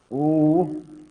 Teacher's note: ऊ का उच्चारण होता है बेटा ओष्ठ से होता है ना। अरे होंठ गोल होते कि नहीं होते इसमें